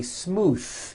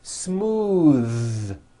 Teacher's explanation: they say smooth with an unvoiced th but it's voiced